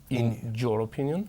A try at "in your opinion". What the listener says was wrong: Quita la J. In your opinion.